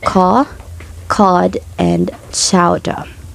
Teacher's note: they are a non-rotic variety so the r sound will be dropped or silent except before a vowel